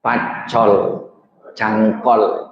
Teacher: Orang Madura nyebut u di akhir enggak bisa cangkul jadi cangkol